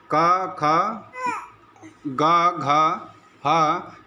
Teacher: क ख ग घ ह, ये सभी क्या है, कंठ स्थानिक वर्ण है, और कंठ स्थानिक वाला जस वर्ण क्या होगा, ग होगा।